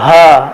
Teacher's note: এই হরফটি উচ্চারণ হবে কণ্ঠনালীর গলার শুরু হতে, অর্থাৎ যা সিনার সাথে সংযুক্ত, হা, এইভাবে হালকা হবে।